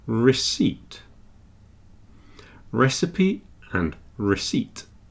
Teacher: so it's got a silent p in there